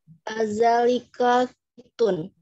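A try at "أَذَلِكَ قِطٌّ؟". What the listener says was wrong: Kitun agak bertanya, Bu.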